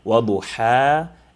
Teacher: Some of the commonly made mistakes pertaining to this is the reader might read both of them the same, either waduhaha or waduhaha, and neither of the two is correct, but the correct is to differentiate, compress the throat to get the ha from the middle of the throat, waduha, and then let go of it after you have extended it to 2 points, waduha, and then you articulate the next one, which will be ha, waduhaha, all right?